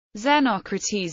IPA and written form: zəˈnɒkrəˌtiːz (Xenocrates)